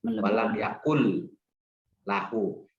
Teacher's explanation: di depannya huruf nun mati bertemu dengan lam, namanya idgham bilaguna. Jadi huruf nunnya, bunyi nunnya masuk ke lam. Walam yakul lahu.